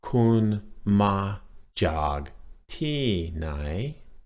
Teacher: the tones in this sentence are flat tone, low tone, falling tone, rising tone.